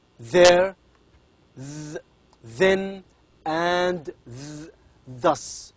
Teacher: the tip of the tongue is responsible or touches the upper front teeth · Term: dentals